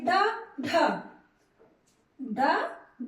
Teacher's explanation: जीभ ऊपर उठकर झटके के साथ नीचे आता है